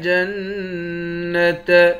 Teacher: جیم کو نون مشدد کے ساتھ ملا کر نون پر غنہ کریں گے